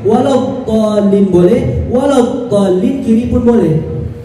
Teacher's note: فهو يأتي في حافتي اللسان، إما اليسرى وإما اليمنى، فأيهما أسهل إليك تنطق بهما، يا إما اليمين يا إما اليسار. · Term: الضاء